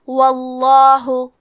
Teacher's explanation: کیونکہ واو پہ زبر ہے تو ہم لفظ الجلالہ مطلب کلمت اللہ کے لام کو تفخیم سے مطلب موٹی آواز میں پڑھیں گے